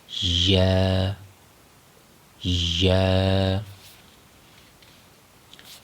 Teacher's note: یا کا مخرج وہی ہے جو ہم نے شین اور جیم کا مخرج پڑھا تھا، یعنی زبان کا بیچ والا حصہ اوپر بیچ تالو کے ساتھ لگانا ہے، یعنی وسط زبان کو وسط تالو کے ساتھ جب آپ لگائیں گے تو اس مخرج سے یا ادا ہوگا